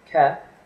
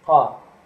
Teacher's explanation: It's just like a K, but you pronounce it in the back of your throat. So instead of your tongue hitting the roof of your mouth, K, it hits the back of your throat, ha.